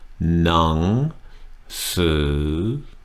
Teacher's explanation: Now, you heard on สือ, the second half of the word, I tightened my throat up just a little bit. หนัง, no tightness at all. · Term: two rising tones